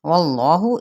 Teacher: इसमें जलाला का लाम पुर पढ़ा जाएगा क्योंकि पीछे ज़बर है।